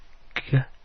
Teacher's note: g is made at the back of your mouth.